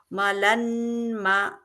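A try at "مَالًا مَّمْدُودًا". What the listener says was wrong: আপনি মাতে একটা টান হবে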